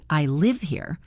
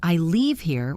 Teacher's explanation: In fast speech, this difference is tiny. Live is quick, leave is longer, and often ends with a slightly different mouth shape. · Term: vowel length